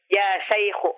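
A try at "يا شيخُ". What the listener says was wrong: Mana itu kha. Kha. Kha. Khu. Ya Syekhu.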